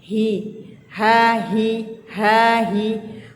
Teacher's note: Huruf H itu juga di pangkal tenggorokan